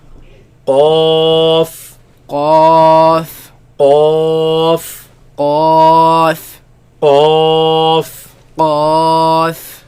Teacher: If you realize the top palate, there's a hard palate, but if you go all the way back, there's also a soft palate. So the last part of the tongue touching the soft palate, and that is where this sound is produced.